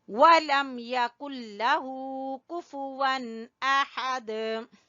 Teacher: آ کو چھوٹا پڑھیں گے اور ہا کو گلے کے درمیان سے نکالیں گے اور دال کے اوپر قلقلہ کریں گے